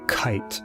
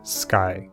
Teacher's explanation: It comes out with a puff of air in the word kite, but not in the word sky. These two sounds, K and K, are different, but we hear them as variants of the same sound.